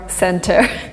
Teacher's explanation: So T is substituted with this longer N, and you get center, not center. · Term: elision